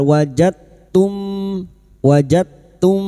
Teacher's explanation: memasukkan huruf yang mati kepada huruf berikutnya dengan menghilangkan sifat qalqalanya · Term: idgham mutajanisain